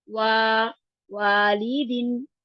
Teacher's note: तो ये अलिफ मद्दा है, अलिफ मद्दा को हम दो हरकत के बराबर खींचते हैं